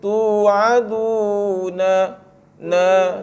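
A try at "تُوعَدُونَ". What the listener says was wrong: Tu dia kena pendek.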